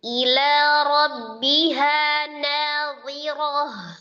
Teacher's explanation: Hamzahnya al-jahru jelas tapi tidak dipanjangkan kasrohnya.